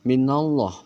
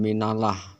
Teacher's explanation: lafaz Allahnya atau lam jalalahnya itu tafhim yang artinya tebal